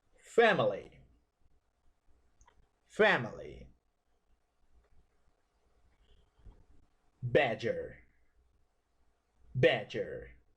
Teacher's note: this is a sound between A and E while opening your mouth not so big this sound has a short duration